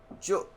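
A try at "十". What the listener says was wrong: Yeah, you said Joe instead of Jew. Oh, it sounded like you said Joe.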